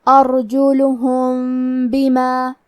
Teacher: اخفاء کا معنی ہے چھپا دینا، تو ہم میم ساکن کو چھپاتے ہوئے اور غنہ کے ساتھ یہ حکم کو ادا کریں گے